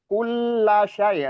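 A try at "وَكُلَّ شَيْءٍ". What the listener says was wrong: La-nya ini terkesan agak memanjang tadi padahal nggak boleh, nggak ada mat ini.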